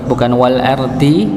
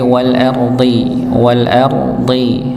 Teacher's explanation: ard wal ardhizati ya wal ardhi ya yang pertama pada kata wal ardhi alardhi alardhi di sini dya dia tetap dalam keadaan tebal nggih bukan wal ardihi tapi wal ardhi wal ardhi rnya dibaca tebal Hurufnya juga tebal. Wal ardi ya wal ardi bukan wal ardi tapi wal ard shod ya.